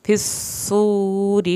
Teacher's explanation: را کے نیچے زیر ہے تو را پتلا پڑا جائے گا